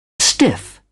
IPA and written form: stɪf (stiff)